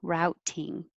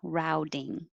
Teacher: If you say it with a T, that's fine, routing, but it's more common with a D, routing.